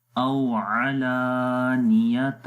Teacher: لام کو لمبا کریں گے، الف سے پہلے زبر آ گیا اس وجہ سے ، اور تا کو پھر آگے واو کے ساتھ ملائیں گے،